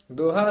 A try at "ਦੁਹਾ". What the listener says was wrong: ਦੋਹਾ ਨਹੀਂ ਬੋਲਣਾ, ਇਹਨੂੰ ਦੱਦੇ ਹੋੜਾ ਲਾ ਕੇ। ਦੱਦੇ ਔਂਕੜ ਹੈ, ਛੇਤੀ ਉਚਾਰਾਂਗੇ ਤਾਂ ਸ਼ੁੱਧ ਬੋਲਿਆ ਜਾਏਗਾ। ਦੁਹਾ ਦੁਹਾ ਸਿਰਿਆ ਕਾ ਖਸਮ ਆਪ।